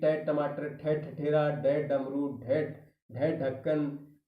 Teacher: या जो कठोर तालु है यानी कोमल तालु से थोड़ा सा आगे की तरफ थोड़ा सा आगे की तरफ जो कठोर तालु है उस तालु से हमारी जीवा है वो टकराती है स्पर्श करती है उसको छूती है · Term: मूर्धन्य व्यंजन